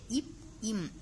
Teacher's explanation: அடுத்தது இப் இம் இந்த ரெண்டும் நம்ம சொல்லும் போது நம்மளோட உதடும், அதாவது மேல் உதடும் கீழ் உதடும் பொருந்துவதால் பிறக்கிறது